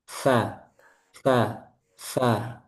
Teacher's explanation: Yaitu punggung ujung lidah pada posisi menempel di ujung dua gigi seri atas.